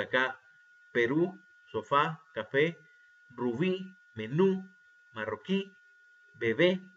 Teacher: Las palabras agudas son las que llevan el acento, en este caso la intensidad de voz, en la última sílaba.